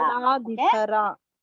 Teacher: You have to stress on the dha.